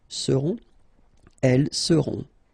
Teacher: final T not pronounced, and then you've got this nasal, on